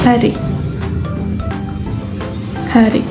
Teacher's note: Seperti membuang nafas atau menghela napas. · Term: geseran